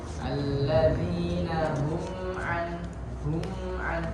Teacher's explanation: Nah, kebetulan mim sukun itu memiliki sifat yang dinamakan dengan sifat bainiyah, seperti lam tadi, mengalir sedikit pada makhraj. Jadi pengucapan di situ mimnya sedikit didengungkan agak panjang. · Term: idhar syafawi